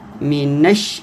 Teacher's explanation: نون کو شین سے ملائیں گے، شین مشدد ہے اور شین زبر یا شئی، یہ لائن کا حرف ہے۔